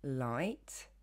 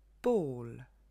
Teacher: En revanche, quand le L est en fin de mot, on dit en anglais que le L est sombre. Il va être beaucoup plus grave et il va se former à l'arrière de la bouche et non plus à l'avant. Vous avez la partie arrière de la langue qui se relève vers le palais mou, puis la tête de la langue qui claque discrètement, le palais haut.